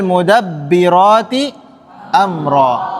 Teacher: Panjangnya dua harakat untuk huruf rnya ya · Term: Mad iwat